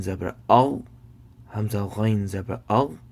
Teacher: make sure ghain is full mouth and do not make it qalqala. Many people, they make this mistake that whenever they see a ghain with a sakin, they think that you're supposed to bounce it.